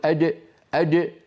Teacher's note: احدنا لا يجري الصوت عند نطق الجيم هذه الجيم عاميه ولا يغير مكان الجيم بالتقديم الى الامام باستعمال منطقه امام وسط اللسان وهي منطقه الدال فيصير يقول اجئ اجئ اسمعوني جيدا الرجيم فهذا استعمال لطرف اللسان